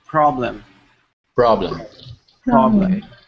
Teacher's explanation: So that's the purpose of taking the tongue all the way back as far as you can. But then as you start to move the tongue forward, we don't make the R sound till the tongue gets to the peak or the middle. And then it's ruh, ruh.